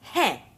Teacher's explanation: The pronunciation of hai is different. It is nasalized.